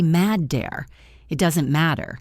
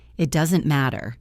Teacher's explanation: Listen to the double t in matter. In American English, it sounds like a soft d.